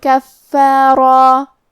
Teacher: کلمت کفارہ میں فا پہ تشدید ہے تو ہم 2 حرف کے برابر فا کو پڑھیں گے، آخری میں را کو اور مد الف کو دونوں کو تفخیم سے ادا کریں گے.